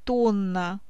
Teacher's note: Удвоенное согласное также обозначает один долгий согласный звук. В слове «тонна» удвоенное «н» обозначает один долгий «н»